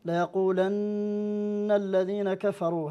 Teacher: هاي النون مشددة فيها غنة اشتركوا فيها الجميع، ليقولن وغن ميما ثم نون شددة، وهذا من الأحكام المتفق عليها.